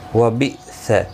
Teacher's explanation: حمزہ ساکن کو جھٹکے کے ساتھ ادا کیا جائے گا